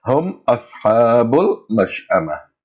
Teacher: Pronounce the mim sound without gunna, and that is to pronounce the joining sound clear. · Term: izharul mim sakina